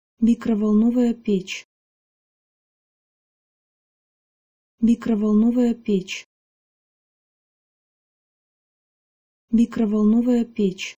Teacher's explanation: In the first half of this combined word, there is only one soft sound, and it's in the first syllable, mi. After that, everything is hard, kro-vol-no-va-ya. · The second word in this combined word does have a soft p at the beginning, but we don't need to worry about the soft sign after che at the end of the word, because che is always soft, and in this case, the soft sign merely indicates that pech is a feminine word.